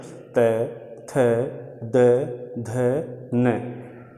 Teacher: दंत मतलब ऊपर वाले दांतों को जिह्वा, जीभ ऊपर की तरफ से स्पर्श करती है जब हम इन वर्णों का उच्चारण करते हैं। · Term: दंत्य